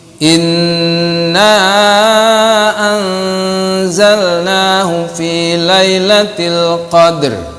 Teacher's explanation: Nun setengah ke za. Jadi nunnya samar-samar. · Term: ikhfa